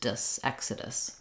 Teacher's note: English in the word Exodus it has the K and sounds our letter O is unstressed so it's going to be a schwa an uh sound and then another schwa at the end · you can think about that last sound having very little vowel. It's very reduced, dus, exodus.